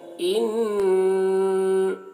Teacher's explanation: ان نون مشدد ہے, یہاں پر نون میں غنہ کریں گے. ان اس طرح غنہ ہے.